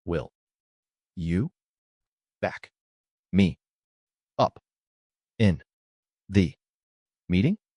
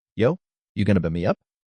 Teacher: completely elided the K in back because it was trapped between a CK and an M.